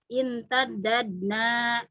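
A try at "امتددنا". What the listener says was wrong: jalannya kalau sudah dibuka jangan ditasdid lagi. Data imtadadna, imtadadna.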